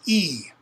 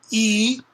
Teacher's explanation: it's what's called a high front vowel because it's made high in the mouth where it with the